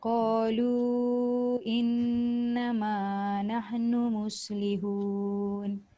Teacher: nun sabdu dengungnya mesti cukup kadar 2 harakat